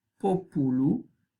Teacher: aquí en la penúltima es una vocal breve, por lo tanto, el acento recae en la tercera desde el final